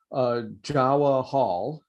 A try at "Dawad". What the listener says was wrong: Close. It's usually people go with the J or the D. In this case, the J is silent. It's Dawad.